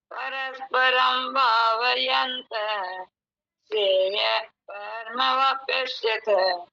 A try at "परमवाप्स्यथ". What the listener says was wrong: वापस्यथ बोल रहे आप, पे, पे, पे पूरा क्यों बोल रहे? वाप्स्यथ। वाप्स्यथ नहीं है, श्रेय परमवाप्स्यथ।